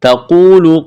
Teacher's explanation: اذ، ذال کو نرم کرنا ہے، تقول، قاف کو موٹا کرنا ہے، واو مدہ ہے، الف کے برابر کھینچنا ہے۔